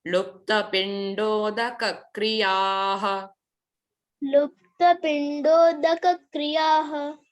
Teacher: last में विसर्ग है ना तो ह का उच्चारण होगा